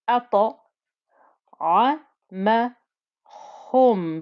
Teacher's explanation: Ta, make sure this ta is nice and thick and heavy. It's the bouncy ta because there's those 5 letters that when they have sukoon on them, they bounce back, the qalqala.